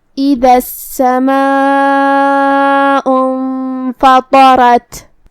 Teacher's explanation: کلمت اذا میں الف کے نیچے زیر ہے تو ہم حمزہ کو نیچے سے ادا کریں گے. حمزہ کی ادائیگی حلق کے نیچے والے حصے سے ہے